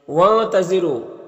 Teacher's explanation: نون میں اخفا ہوگا، اس کی آواز کو ناک میں چھپا کر پڑھیں گے